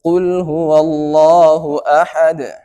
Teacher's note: বলতে হবে কুল বলা যাবে না বলতে হবে কহু আল্লাহু আহাদ লাস্টে আহাদ লাস্টে কিন্তু একটা কলকলা হয়েছে একটু বাড়ি দিয়েছি